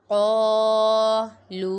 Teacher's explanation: قاف الف زبر قا، لام واو پیش لو، قالو۔ قاف کو پر پڑھیں گے، حروف مستعلیہ میں سے ہے اور یہاں پر الف مدہ ہو رہا ہے اور لام پہ واو مدہ ہو رہا ہے۔